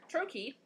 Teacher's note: It's two syllables, the first one stressed, the second one unstressed.